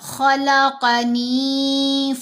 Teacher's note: ان کے اوپر چاہے کوئی حرکت ہو چاہے نہ ہو، ان کو ہم نے ہمیشہ موٹا ہی پڑھنا ہوتا ہے۔ تو یہاں ہم نے خا کو موٹا پڑھا، قاف کو موٹا پڑھا